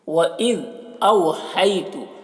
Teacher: وَإِذْ أَوْحَيْتُ، دیکھیے او یہاں پر واولین ہے، اسے نرم آواز کے ساتھ جلد پڑھیں گے